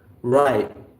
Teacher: the tip of the tongue, it sort of touches behind the upper gum of the upper jaw, and it's not sort of released. It stays there. It hits there like that. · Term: held T